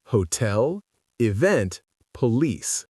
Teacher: The correct answer is B, stressed on the second syllable